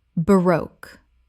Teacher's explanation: Two syllables with the stress on the second. It rhymes with spoke.